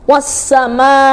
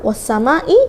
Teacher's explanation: ini pas kan panjangnya dua setengah Alif atau lima harakat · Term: mad wajib muttasil